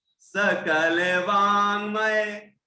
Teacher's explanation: न होता है ना, नाक से स्वर आता है, नाक से आवाज आती है, वो है ना, वो अनुस्वार है।